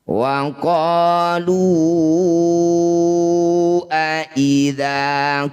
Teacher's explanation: Mad tabi'i bertemu hamzah di lain kata disebut bacaan namanya mad jaiz munfasil. Jadi lu panjangkan 5 harokat atau 5 ketukan.